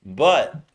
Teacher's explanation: you stop it with the throat, not with the tongue. The tongue doesn't go up. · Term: glottal T